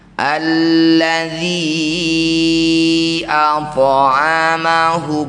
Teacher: Di lain kata disebut bacaan namanya mad jaiz munfasil. Dzi panjangkan lima harakat atau lima ketukan.